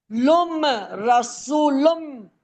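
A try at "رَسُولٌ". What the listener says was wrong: रसूलुम, सू को खींचना है, वाव मद्दा है ना।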